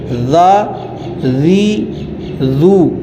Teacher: اور آگے ذال ہے، ذال، اس کو پڑھیں گے ذا ذی ذو. جو زبان ہے اس کو دانتوں کے اندرونی کنارے کی طرف لگا کر جو ہے وہ پڑھا جائے گا